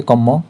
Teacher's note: শব্দের মধ্যে র লোপ পেয়ে যাবে বা রকার লোপ পাবে এবং পরবর্তী ব্যঞ্জন দ্বিত্ব হবে বা হয়